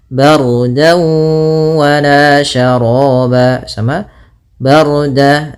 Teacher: di sini ra-nya tebal yaitu ra takhim karena sebelum ra sukun ada huruf berharakat fathah. Kemudian dawu ada fathatain bertemu dengan waw, maka apabila ada fathatain bertemu dengan waw hukumnya idgham bi gunnah atau ma'al gunnah, yaitu kita masukkan dannya ke waw.